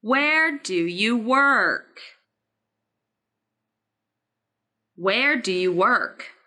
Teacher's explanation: in this wh question the word where should be emphasized then he needs to emphasize two words where and work